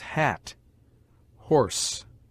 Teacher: H is a note of aspiration, and shows that the following vowel must be pronounced with a strong emission of breath